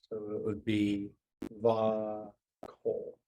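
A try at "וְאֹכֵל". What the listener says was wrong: Va. Don't forget the vowel up here. Va ochel. The holum up that's hiding out here.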